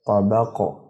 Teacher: وقف سے پہلے تک تو اس پر قلقلہ نہیں ہوگا، جب وقف کیا جائے گا تو جزم آنے کی وجہ سے اسے قلقلہ کر کے پڑھیں گے، مثلا طابقن آگے وقف طابق۔